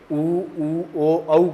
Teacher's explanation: ऊ ओ औ को बोलते हैं तो होठ वृत्त के समान गोल हो जाते हैं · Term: वर्ताकार